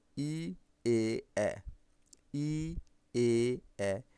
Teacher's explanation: দেখো তো তোমার জিহ্বা কোথায় আছে, তোমার জিহ্বা কিন্তু এইভাবে দাঁতকে স্পর্শ করে আছে, জিহ্বা দাঁতকে স্পর্শ করে আছে। ই, এ, এ উচ্চারণ করার সময় জিহ্বা দাঁতকে স্পর্শ করে আছে, সেজন্য আমরা কি বলবো, এগুলো অগ্র বলবো, ঠিক আছে? অগ্র মানে সম্মুখ।